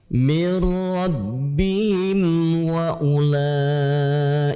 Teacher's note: Ulaika ala hudam mir rabbihim wa him dibaca dengan jelas karena itu adalah izhar syafawi